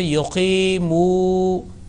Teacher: Now remember that yuqimuna, qaf followed by ya, and he has prolonged that one, because this is harfe madda, letter of prolongation